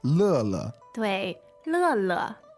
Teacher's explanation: that's the fourth tone and then neutral tone